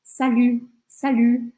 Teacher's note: o u do francês esse U com biquinho ó salut salut não é para falar o t não é